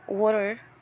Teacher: the stress is on the first syllable and the second syllable is unstressed